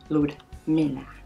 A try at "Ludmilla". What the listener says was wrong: It's Lujmia. Lujmia. Lujmia. Lujmia. Don't say Ludmia anymore, okay? That's how they pronounce it in Brazil. Lujmia. No, Lujmia.